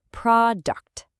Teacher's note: The stress is on pro, which means that U in the second syllable becomes a schwa. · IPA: /ə/